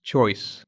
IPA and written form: tʃɔɪs (choice)